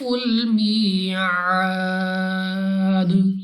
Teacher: next یا ساکن سے پہلے زیر یا مدہ 2 سیکنڈ تک لمبا کریں گے، الف سے پہلے زبر الف مدہ، مگر وقف میں جب دال کو ساکن کریں گے تو الف مدہ کے بجائے مد عارض ہوگی، جس کی وجہ سے 3 4 یا 5 سیکنڈ تک کھینچنا ہوگا، اور وقف میں اس دال کو ساکن کریں گے اور قلقلہ کر کے پڑھیں گے، یعنی وقف کرتے وقت ہمیں اپنی آواز واپس لوٹتی ہوئی سنائی دے گی